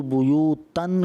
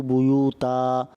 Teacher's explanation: جب دو زبر پر وقف کرتے ہیں تو اس کو الف سے بدل دیتے ہیں. لا تدخلوا بیوتن کو پڑھیں گے لا تدخلوا بیوتا.